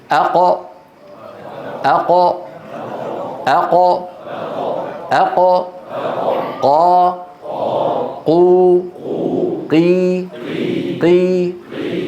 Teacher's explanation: مخرج القاف، جذر اللسان أو أقصى اللسان مع مين؟ مع الحنك اللحمي، مو العظمي، اللحمي.